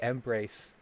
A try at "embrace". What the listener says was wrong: embrace. Embrace. Embrace. Just stop putting such an emphasis on the M. It's embrace. Well, I mean, technically, it's embrace. But no, it's just the emphasis is on the second syllable of the word, not the first.